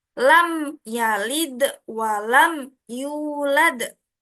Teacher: jelas di bibir jadi cara membacanya itu terang di bibir dengan mulut tertutup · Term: izhar syafawi